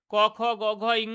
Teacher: ক বর্গের ক, খ, গ, ঘ, ইঙ্গ এগুলোকে বলা হচ্ছে কন্ঠ ব্যঞ্জন ধ্বনি। যেহেতু কন্ঠ থেকে উচ্চারিত হচ্ছে।